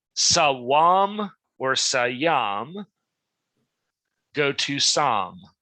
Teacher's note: an intervocalic glide, W, and yod, commonly syncopate. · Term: Syncope